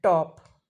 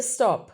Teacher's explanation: the phoneme t in English has allophones like the aspirated, as in top, right? And unaspirated T in stop